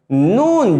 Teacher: نون جیسے ہی آپ نون کہیں گے خود بخود آواز جو ہے ناک سے نکلے گی. نون جیسے ہی نون کہیں گے اس کی آواز ناک سے ادا ہوگی، تو لہٰذا اس کا ایک دوسرا نام ہے حرف غنہ.